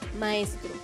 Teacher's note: M. Nasal, bilabial, sonora